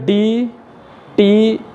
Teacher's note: तो डी और टी में आपका जीभ जो ऊपर वाले भाग को टच करता है, एकदम सेम एक ही जगह को टच करता है, जिसको कि हम लोग क्या कहते हैं इंग्लिश में प्लेट, हिंदी में कहते हैं तालु।